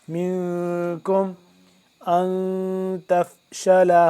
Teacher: اخفا کریں گے یعنی کہ ناک کے اندر لے جا کر آواز کو پڑھیں گے۔ منکم ان تفشلا، حمزہ نون زیر ان، حمزہ نون زبر ان، اس نون کے اوپر یہ نون بھی ساکن ہے، تو یہاں بھی ہم کیا کریں گے، اخفا کریں گے۔